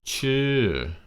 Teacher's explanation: get that falling tone in your voice okay bring it up and bring it down